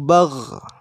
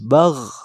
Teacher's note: Hamz itu lebih ke nafas, sedangkan ghain bukan nafas yang keluar tapi suaranya.